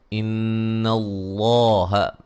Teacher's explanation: یہاں بھی موٹا کریں گے، اس سے پہلے زبر ہے، اور یہاں نون مشدد پہ غنہ ضروری ہے